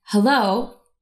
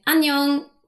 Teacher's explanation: say hello in a nice low pitch in English and annyeong in a slightly higher pitch when speaking Korean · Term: higher fundamental frequency